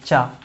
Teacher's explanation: च वर्ग जितना है वो तालु से बोला जाता है